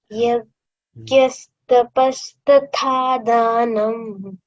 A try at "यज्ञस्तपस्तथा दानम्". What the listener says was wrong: it is yagna not yagya यज्ञस्तपस्तथा दानम्